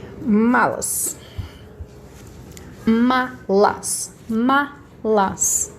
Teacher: a minha sílaba mais forte não é a última, é a penúltima